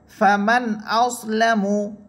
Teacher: এখানে নুন সাকিনের পরে হামজা আসার কারণে গুন্না হচ্ছে না। ফামান আউসলামু কোনো গুন্না হচ্ছে না, বরং আমরা নুন সাকিনকে আরও স্পষ্ট করে পড়তেছি।